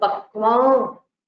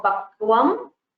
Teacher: You cannot pronounce the full with the closed lips for the anuswara because it is a purely nasal sound. You don't use the lips for pronouncing the anuswara. So pakvam, you have to stop with pakvam without closing your lips.